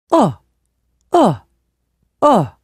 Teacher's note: this sound is made by moving your lips like for ooh but the vowel is looser and your mouth is more open